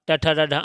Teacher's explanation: ट वर्ग पूरा ट ठ ड ढ अण मूर्धन्य होता है